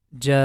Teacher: Here, as you can see, letter Jim has fatha, and after that is letter Alif, and this Alif becomes mad letter, and after that you can see letter Hamza is coming, which means we are going to make the Ja sound for 5 count